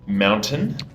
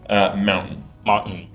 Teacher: We'll just leave the T out.